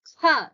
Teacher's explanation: So that kha is a mahaprana, so you have to say it as kha, not ka.